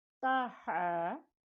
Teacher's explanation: ہا گلے کے درمیان سے